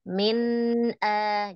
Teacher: jadi kalau kita nun sukun itu dialirkan sedikit huruf nunnya